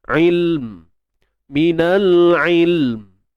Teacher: Okey, il, kemudian mim tu. Pergi pada makhraj mim. Mim kat mana? Dua bibir, mulut dirapatkan.